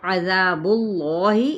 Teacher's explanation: جلالہ کا لام کھڑا زبر کے ساتھ ہے، تو اس کو ہم نے تفخیم کے ساتھ پڑھنا ہے، یعنی پر کر کے، کیونکہ پیچھے ضمہ پیش موجود ہے۔